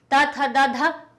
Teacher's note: दांत से टकरा रही है जीभ